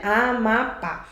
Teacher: Mais forte não é o pá, não é no final? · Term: sílaba mais forte